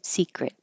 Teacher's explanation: And this T at the end, you just hold it in the T position.